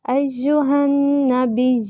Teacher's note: ہا کو نون میں داخل کر کے پڑھیں گے، نون پہ غنہ، نون پہ شد ہے، نون مشدد تو غنہ ہوتا ہے